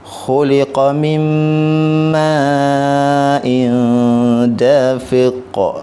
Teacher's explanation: Kat sini kita tengok yang ni tanwin bertemu dengan huruf dal. Bacaannya dengung. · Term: ikhfa hakiki